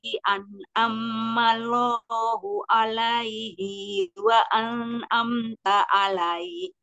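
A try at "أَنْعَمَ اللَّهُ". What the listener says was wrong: Di sini enggak ada tasjid, jadi an'amallah, jangan an'am, itu enggak ada an'am. An'amallah. Alaih, jadi mat alif li sukun kalau berhenti di situ.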